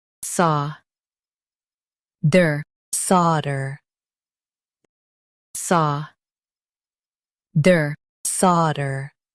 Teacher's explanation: In U.S., stress saw and say der.